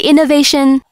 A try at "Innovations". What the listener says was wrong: Hold on, innovations. We have lots of innovations, so put a bit more emphasis on the S.